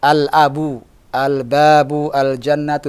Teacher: Selesai sudah al-huruful qamariyatu, dan tadi sudah kita jelaskan al-huruful qamariyatu, alif lamnya yang masuk ke huruf-huruf qamariyah ini lamnya dibaca jelas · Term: alif lam al-qamariyah